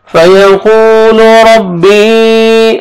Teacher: را کو مرزبر ہے را کو موٹا کر کے پڑھیں گے. آگے یا مد ہے یا ساکن سے پہلے زیر ہے اوپر مد جائز بھی ہے 3 سے 4 الف کے برابر 3 سے 4 سیکنڈ آپ نے ایکسٹرا کھینچنا ہے. · قاف کو کھینچنا ہے واو مد ہے ایک الف کے برابر